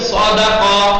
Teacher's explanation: بس سین کم حجم ہوتا ہے، صاد پر حجم اور درست ہوتا ہے، یعنی مفخم ، سین کو منہ بھر کے ادا کر دو، وہ سواد